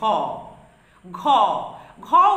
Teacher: গ এর সঙ্গে হ যুক্ত হয়ে উচ্চারিত হচ্ছে ঘ। ঘ ঘ উচ্চারণ করলেই পাবে গ আছে আগে, তারপরে আছে হ। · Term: মহাপ্রাণ ব্যঞ্জন